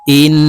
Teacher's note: আমরা এই হামজা নুনের সাথে গুন্নাহ করে উচ্চারণ করব দেখুন হামজাহ নুন জের ইন এক আলিফ পরিমাণ ধরে রাখতে হবে